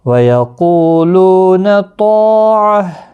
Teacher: قو واو مدہ ہے، لو بھی واو مدہ ہے، طا الف مدہ ہے، ایک ایک الف کی مقدار کے برابر کھینچ کر پڑھیں گے۔ قاف حروف مستعلیہ ہے، پر پڑھنا ہے، اور وقف کی صورت میں گول تا ہا ساکن پڑھیں گے۔